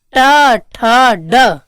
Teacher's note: री टूर्षाणाम मूर्धा, तो री टू मतलब ट वर्ग, ट वर्ग में आ जाता है ड, ट ठ ड, तो इसका मतलब इसका उच्चारण स्थान क्या हो जाएगा? मूर्धा।